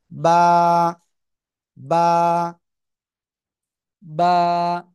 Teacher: নিচে এই যে দুই ঠোঁট, দুই ঠোঁটের ভিজা অংশ থেকে আমরা উচ্চারণ করব এবং একালিফ টেনে পড়ব।